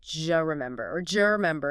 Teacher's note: The D sound at the end of do and the J sound like Y in yes at the beginning of you often merge together. D plus Y, just. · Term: assimilation